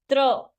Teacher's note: पहले जैसे ही हम त बोलने लगते हैं और फिर हम र बोल देते हैं तो त्र का साउंड आता है